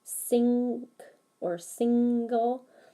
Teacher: the sound is coming out the nose but the sound is being blocked by the tongue